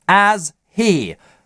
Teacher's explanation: He редуцируется и прилипает к предыдущему слову. H выпадает вообще.